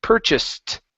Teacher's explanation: this ED ending at the end sounds like a T